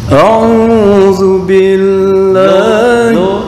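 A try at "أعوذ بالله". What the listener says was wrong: Zal. Oke, mah PR ya, makhraj zal. A'udzu zazizu azza.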